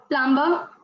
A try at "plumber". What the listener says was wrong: Again, B is silent in this. Plumber. Plumber. Not bur. Ma. Plumber. Plumber. So B is silent in both of these.